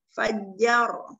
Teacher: ra sukun yang diawali dengan fathah. Ra-nya dibaca tafkhim fajjar tebal.